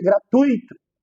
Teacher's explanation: tui é um ditongo não é um iato